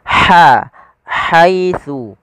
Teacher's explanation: dan huruf ha ini memiliki sifat hamas. Makhrajnya dari tengah tenggorokan kita